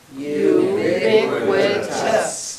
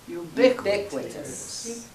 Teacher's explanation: And the accent is on the second syllable.